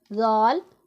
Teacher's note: ذال میں سیٹی کی آواز نہیں نکلنی چاہیے۔